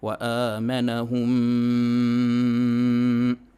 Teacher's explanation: اچھا، شاید میں بتلانا بھول چکا ہوں کہ میم ساکن کے بعد میم آئے تو ادغام ہوگا، ادغام کے اندر ایک الف کے برابر ہم گنہ کریں گے